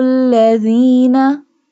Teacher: it pronounced from the tip of the tongue touching the inner edges of the top two front teeth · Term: Dhal